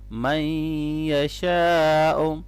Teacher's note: نون ساکن کے بعد آگے یا ہے، حروف یرملون میں سے، تو یہاں پر ادغام مع الغنہ ہوگا